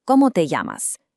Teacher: That double L in llamas actually creates a Y sound.